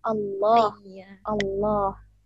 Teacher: Tebal itu ketika lafzul jalalah, lafaz Allah. Nah, di situ di situ lamnya tebal.